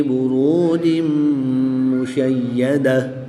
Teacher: 2 زیر کی تنوین کے بعد میم حروف یلملون میں سے ہے تو یہاں پر ادغام مع الغنہ ہوگا یعنی یہاں پر غنہ کر کے پڑھیں گے۔